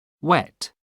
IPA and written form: wɛt (wet)